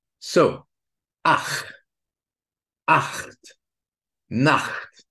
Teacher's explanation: This ch is a friction between the rear part of the tongue and the velum. And it's helpful to know that this ch is produced more or less in the same place where the k is produced.